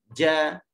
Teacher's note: Dia akan bunyi, kita akan rasa huruf tu keluar daripada hujung lidah. Walaupun bukan hujung betul ni, tapi permukaan hujung lidah lah.